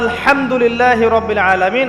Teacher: এই হা এর মাখরাজ কোথায়? হা এর মাখরাজ কোথায় বলেন একজন? কণ্ঠনালীর মাঝখান থেকে।